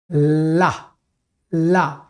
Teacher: आप ला बोल के देखिए, ला ला, जब ला बोलते हैं तो आपकी जबान ये फ्रंट को एकदम लॉक कर देती है, ऐसे लॉक हो जाता है, और हवा अगल बगल से निकलती है। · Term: पार्श्विक